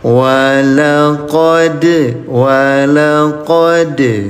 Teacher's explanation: Dal dalam keadaan mati atau dalam keadaan sukun, qalqalah pantulkan ya.